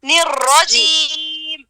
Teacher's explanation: نون کو را سے ملائیں گے